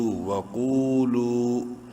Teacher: قاف کو بولڈ کرتے ہوئے ایک الف کے برابر لمبا کرنا ہے واو مدہ کی وجہ سے ، اور لام کو بھی ایک الف کے برابر لمبا کرنا